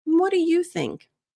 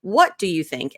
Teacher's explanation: Whenever you're leading meetings and you're leading conversations, I recommend emphasizing you instead of what.